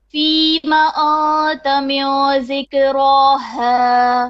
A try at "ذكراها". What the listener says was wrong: Your dhal, it sounds like za to me. I don't know, maybe it's an audio thing. So ذك, okay, ذكراها.